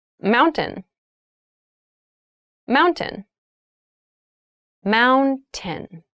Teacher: when you pronounce this word in fast speech, it sounds like mountain. The T sound is reduced.